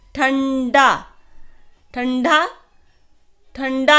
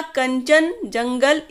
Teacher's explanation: तो अनुस्वार का उच्चारण कहां से किया था नाक से